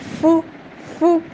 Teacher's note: آپ کی آواز کسی حرف کو، خاص حروف جن میں ہمس ہوتی ہے، ان حروف کو ادا کرتے وقت مخرج میں ہی نیچے جگہ سے وہ حرف ادا ہوتا ہے، اتنی کمزوری سے ٹھہرے کہ ساتھ میں سانس جاری ہو جائے۔ فو فو، وہ آپ کو فیل ہو رہا ہے نا ساتھ میرا سانس باہر کی طرف نکل رہا ہے، تو یہ ہوتی ہے ہمس۔ · وہ پہ آپ کے ہونٹ پراپر گول ہوں، ہونٹوں کا دائرہ جتنا تنگ ہوگا وہ اتنا پراپر ادا ہوگا۔ فا میں ہمس ہوتی ہے، یعنی اس کے ساتھ آپ کا سانس جاری ہو رہا ہوتا ہے۔